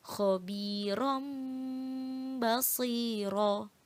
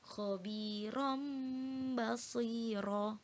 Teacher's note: suara nun sukun atau tanwin diganti suara mim dan disertai dengan dengung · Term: iqlab